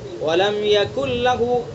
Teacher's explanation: इदगाम ताम है यानी मुकम्मल इदगाम हो गया, नून की आवाज़ यहाँ पर बिल्कुल ख़त्म हो गई